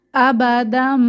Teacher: তানভীনের পরে বা পাচ্ছি তো মিম দিয়ে পরিবর্তন করে পড়বো গুন্নাহ সহ